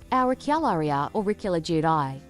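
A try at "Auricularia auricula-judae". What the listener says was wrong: It sounds like you're just kind of merging all your letters together. We gotta work on your enunciation, but like, not bad. That was kind of okay as a pronunciation, maybe.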